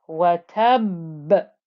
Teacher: you can hear that pressing noise of the ba in this ba with the shadda before you get the bounce back of the qalqala